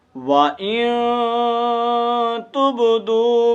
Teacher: اخفا آپ کو پتہ ہے کہ کیسے کرتے ہیں، آواز کو ناک کے اندر لے جا کر کے ایک الف کے مطابق لمبا کرنا ہے